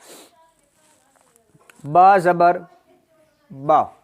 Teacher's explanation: ہونٹوں کے تر حصہ سے یہ با ادا ہوتا ہے